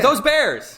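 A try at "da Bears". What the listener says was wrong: No, see, it's DA. The Bears. Nope. So you added a letter there. It's just duh. Say duh.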